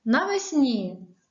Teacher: навесні звук ні м'який перед і